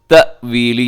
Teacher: یہاں حمزہ ہے، جھٹکے کے ساتھ وقف کیجیے گا۔